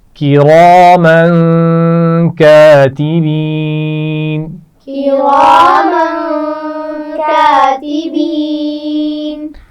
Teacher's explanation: کِرَامًا غنہ ہو رہا ہے, کاتبین میں یا مدہ ہے.